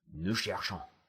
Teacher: That ONS, that's a nasal vowel. ONS, you just launch it right into your nose.